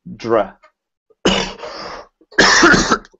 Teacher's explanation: you have to make an R sound, which makes you have to pull your tongue all the way back